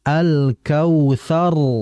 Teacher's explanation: Maka kondisi huruf r-nya itu dibaca tebal